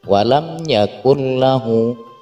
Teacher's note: ketika nun sukun bertemu dengan huruf lam maka tidak ada dengungan disitu langsung saja hanya dimasukkan ke huruf setelah nun sukun walam Yakun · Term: idgham bilagunnah